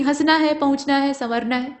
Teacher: चंद्रबिंदु वाला जो है उसमें सिर्फ आपको नाक का हल्का सा यूज करना है और मुंह का पूरा इस्तेमाल करना है